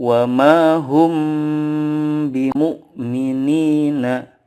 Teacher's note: sukun bertemu dengan huruf ba mim sukun bertemu dengan huruf ba cara membacanya adalah dengan mendengungkan atau menambahkan guna yang dipanjangkan 2-3 harokat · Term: Ikhfa Syafawi